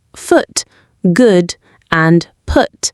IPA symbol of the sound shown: ʊ